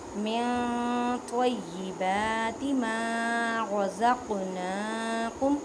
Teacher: قاف ساکن ہے اس وجہ سے کلکلا کریں. کلکلا کا مطلب ہے ہلا کر پڑھنا